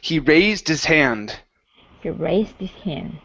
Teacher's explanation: if you want to drop that H, you have to connect his to raised